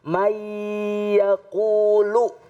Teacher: nun mati bertemu dengan Ya ya adalah huruf Idgham Bighunnah jadi harus diikutkan didengungkan May yaqulu Nah ini salah satu daripada hukum idgham Bi Bighunnah · Ya adalah huruf idgham bigunah. Jadi harus diidghamkan, didengungkan.